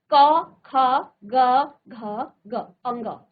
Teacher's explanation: कंठ यानी कि गले से जो आवाज आपकी आती है · ये आपकी सारी आवाजें कहाँ से आ रही हैं? आपके गले से आ रही है।